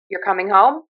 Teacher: we have a very unique intonation pattern where we like to end our statements with an upspeak. · But in Pittsburgh, we love for our pitch to rise at the end of a sentence.